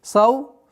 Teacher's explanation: Долгота в размере двух огласовок фатхи.